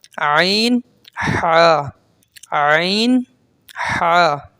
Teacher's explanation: यह हल्क के दरमियान वाले हिस्से से अदा होता है